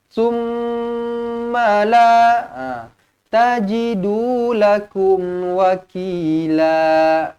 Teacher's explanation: Ma yang dengung dia memang 2 harokat, tapi sebutan ma tu yang jadi pendek.